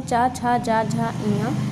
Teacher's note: चा वर्ग के सभी वर्णों का उच्चारण स्थान तालु है